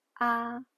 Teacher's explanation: The first tone is a high flat pitch, ah. The second tone is a rising pitch, ah, just like questioning someone with a rising intonation, ah.